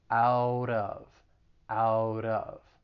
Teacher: when it comes to pronunciation out of so that t again it comes between two vowel sounds so i'll pronounce it as a flap t and then i will link it with the vowel sound in of out of out of and then just just keep in mind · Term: flat T